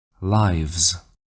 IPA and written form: laɪvz (lives)